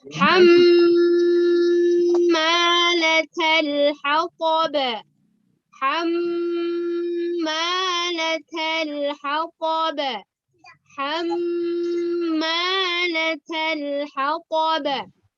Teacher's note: mim adalah kedudukannya sebagai gunnah, maka dia dibaca dengung, ditahannya 2 harokat